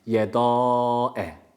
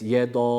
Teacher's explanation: yede Tebbet yeda değil o zaman dal harfini kalın yapmış oluruz Halbuki dal harfi ince bir harftir fetha harekesi almış bunu dört elif miktarı uzatırken a sesi vermekten kaçınıyor